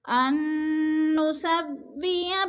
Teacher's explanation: ان پہ غنہ ہو رہا ہے، حمزہ کو نون کے ساتھ ملا کر ادغام کریں گے، غنہ کریں گے، سختی سے جمع کر پڑھیں گے، اور درمیان والا نون ساکن نہیں پڑھا جائے گا، حمزہ کو نون مشدد کے ساتھ ملا کر پڑھیں گے. · ان نسوی بنانا، بنا کے اوپر الف مدہ ہے، الف خالی سے پہلے نون کے اوپر زبر ہے تو الف مدہ، الف مدہ کو ایک الف دو حرکات کے برابر ہم نے کھینچ کر پڑھنا ہے